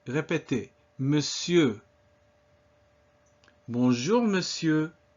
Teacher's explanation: it's not mon, it's just me, in spite of the way it's spelled, and sieur not pronouncing the R